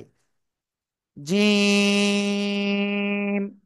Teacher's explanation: জিব্বার মধ্যকান তার বরাবর উপরে তালুর সাথে লাগিয়ে তিন আলিফটা নিয়ে উচ্চারণ হবে